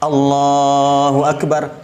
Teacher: Jadi alifnya pendek, lamnya yang panjang, kemudian lafaz Allahnya, bibirnya jangan bergerak.